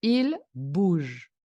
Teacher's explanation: No pronuncio la E, la pronunciación cae sobre la G, que se pronuncia J.